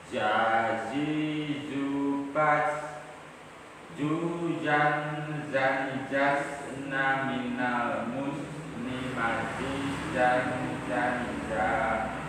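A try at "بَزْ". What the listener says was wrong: Zazizu baz. Nah pas baz itu jadinya jim. Baz. Nah harusnya gitu. Baz. Tapi tadi salah. Berarti jim. Nah itu kurang konsisten. Karena ada yang benar, ada yang keliru juga.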